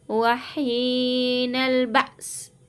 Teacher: یہاں پہ مد متصل ہو رہا ہے، اس کو 5 الف کی مقدار کھینچیں گے۔